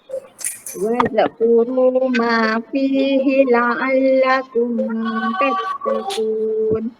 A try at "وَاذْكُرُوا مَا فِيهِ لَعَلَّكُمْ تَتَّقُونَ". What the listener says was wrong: Okey, wazkuru itu nampak bunyi dengar macam zal tu dia melantun. Wazkuru kan.